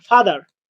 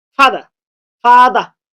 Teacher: শব্দের শেষে যদি আর সাউন্ড থাকে, তাহলে আর এর উচ্চারণ হবে না।